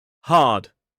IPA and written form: hɑːd (hard)